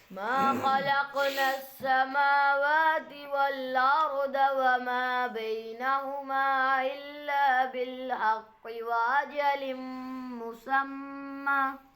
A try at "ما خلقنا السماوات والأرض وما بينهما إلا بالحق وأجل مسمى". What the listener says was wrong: अब आपने इकट्ठा पढ़ते हुए ना मद वगैरह छोड़ दिए. मुसम्मा एक तो ये और वमा बैनहुमा पे.